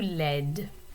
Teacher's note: When you add the E to it, then you do pronounce the D, and the vowel sound in the middle changes a little bit. It goes from laid to laide.